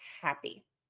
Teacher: We're always going to stress that hap syllable, right?